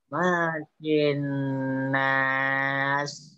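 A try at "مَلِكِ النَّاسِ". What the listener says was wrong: Tidak jelas li-nya kamu. Maliki. Li-nya harus jelas. Malikin nas.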